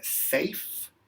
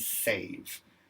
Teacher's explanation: the difference between safe and save safe with F say so notice there's a vibration with that V